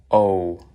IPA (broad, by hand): oʊ